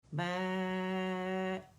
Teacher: لازمی یا تو 4 کاؤنٹ کھینچیں گے ایسے 5 کاؤنٹ کھینچیں گے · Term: مد المتصل الواجب